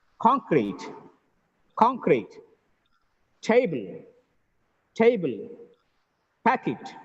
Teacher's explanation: In all these words, the first syllable is stressed